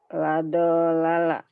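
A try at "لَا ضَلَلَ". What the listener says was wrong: nggak ada yang panjang. La, dolala. La, dolala.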